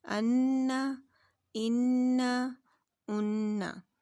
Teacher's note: نون مشدد غنہ زمانی کے ساتھ ادا کرتے ہیں تو ہماری آواز ناک کے پاسے سے نکلتی ہے، یعنی کہ بھنبھناہٹ جیسی آواز آتی ہے ہمیں، تو یہ ہم غنے کے ساتھ نون کو ادا کر رہے ہیں۔